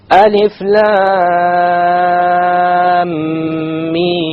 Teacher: Alif lam mim. So the lam 6 harakas, the mim 6 harakas, and in between the 2 ghunna of 2 harakas